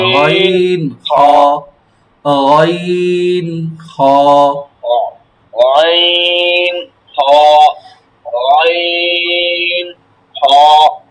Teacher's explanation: হ্যাঁ, এর একটু উপরে উপরে দেখেন কণ্ঠনালীর শেষ ভাগ হইতে এই যে আলা জিহ্বা যা আছে আমাদের, আলা জিহ্বার একটু আগে গইন, স্বাভাবিক একবারে হালকা গইন, কোনো কষ্ট হবে না